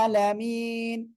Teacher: আইনটা কি গলাটা চেপে পড়তে হয়